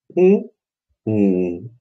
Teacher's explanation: Опять у нас заднего ряда, достаточно глубокий такой звук получается.